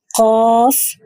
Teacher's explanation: کوے سے متصل زبان کی جڑ جب اوپر کے تالوں سے ٹکرائے گی تو یہاں سے قاف ادا ہوگا · یہ حروف مستعلیہ میں سے ہے، یعنی پر حروف میں سے ہے، اس کو موٹا کر کے پڑھا جاتا ہے